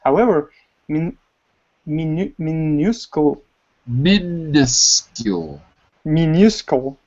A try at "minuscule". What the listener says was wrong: Min. Because it looks like a U, but we don't say it like a U. We say min. Minuscule.